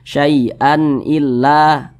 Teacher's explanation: Maka hukumnya adalah izhar halqi. Karena dia izhar, dibaca jelas, tidak berdengung, baca pendek saja. Syai'an illa, annya jelas.